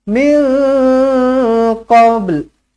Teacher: Nun kosong bertemu dengan qaf, ikhfa hakiki, dengungkan dua harakat. · dilantunkan qalqalah sughra dan huruf lam di hujung dibunyikan sedikit sahaja